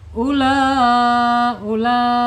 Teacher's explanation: Wajib muttasil yaitu wajib muttasil tersambung ya. Mad wajib tersambung ini hamzahnya tersambung panjangnya 4 sampai 5 harakat. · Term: mad wajib muttasil